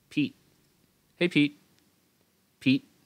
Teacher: Thì người Mỹ thì người ta sẽ không thở ra cái âm T này. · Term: cái stop T